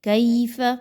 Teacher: یائلین ہے، یائلین کی ادائیگی نرمی سے ہوتی ہے، لیکن آپ نے یہاں پر اس کو اچھے سے اس کی ادائیگی رکھنی ہے، مجہول نہیں رکھنا، کئے نہیں پڑھنا بلکہ کیف